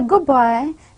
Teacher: Da sound, it is getting affected by the next following sound, that is ba, and it is almost disappearing as good boy, because I am the next phoneme, it is more powerful than the previous one. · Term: regressive assimilation